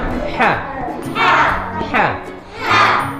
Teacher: Jadi gini dia, ketika perhatikan dulu, ketika kita mengucapkan ha yang keluarnya di tengah kerongkongan ini, kerongkongan kita agak terjepit, seperti rasanya agak terjepit ya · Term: huruf ha